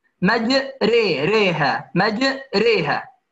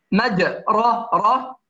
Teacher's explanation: الحركة الممالة وهي أن نأتي بالفتحة نحو الكسرة، فلا هي فتحة خالصة ولا كسرة خالصة